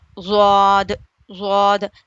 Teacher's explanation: زبان کی کروٹ اوپر کے 5 دانتوں سے لگ کر زواد ادا ہوتا ہے